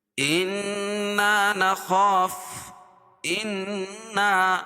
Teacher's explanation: انا نخاف، انا نون مشدد، نون مشدد اس نون کو کہتے ہیں جس کے اوپر تشدید ہو اور وہ 2 مرتبہ پڑھا جاتا ہے اور سختی کے ساتھ۔ انا الف مد، الف سے پہلے نون کے اوپر زبر ہے تو اس کو 1 الف کے برابر کھینچ کے پڑھیں گے۔